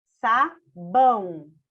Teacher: Todo mundo já sabe que o ão é um encontro vocálico. E esse ão, a gente vai classificar ele como uma vogal e uma semivogal, porque a gente tem uma vogal pronunciada e uma outra não. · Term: ditongo